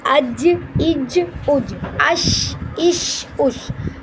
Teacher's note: زبان کے بیچ اور اس کے مقابل اوپر کے تالو سے ادا ہوتا ہے۔